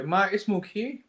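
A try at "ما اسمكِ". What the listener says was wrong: But remember that Hamzatul Wasl is only pronounced at the beginning. Yeah, at the beginning of a sentence. It's not a big deal if you say Ma ismuki. It's not a disaster. But to be more eloquent or fluent, we can say Masmuki.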